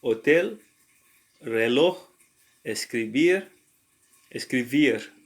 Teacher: And a word ends in a consonant other than NNS, the last syllable is stressed